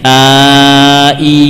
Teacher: Nah, kita insyaallah merasakan ada gerakan pada lidah. Yang awalnya pada posisi aslinya ketika alif A. Ketika ya bagaimana? Bagian tengah lidah naik.